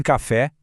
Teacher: Em café, a força tá no fé. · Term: sílaba tônica